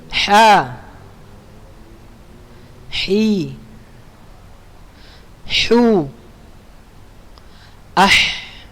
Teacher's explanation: Makharijul hurufnya di tenggorokan tengah. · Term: huruf ha